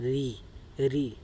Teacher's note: तो हमारी जीभ, जो हमारी टंग है दोस्तों, उसमें कंपन होता है। · ये निकलती है हमारी मूर्धा से। हमेशा याद रखिएगा, मूर्धा से, ये हमारी मूर्धा से निकलता है।